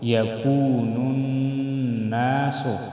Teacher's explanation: يكون میں وائی مدہ ایک الف کے برابر کھینچ کر پڑھیں گے نون ناس نون مشدد میں غنہ کریں گے يكون الناس كالفراش